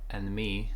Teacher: and me, no D here, and we connect